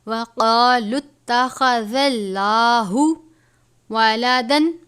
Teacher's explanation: وقالوا اتخذ اللہ، قاف کو پر پڑھیں گے، خا کو بھی پر پڑھیں گے، زال کو نرمی سے، لام کو پر پڑھیں گے.